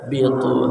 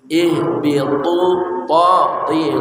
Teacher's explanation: ha dari pangkal kerongkongan kita Qul nah ha ya nah B dari ujung tepi lidah bersama gusi gigi atas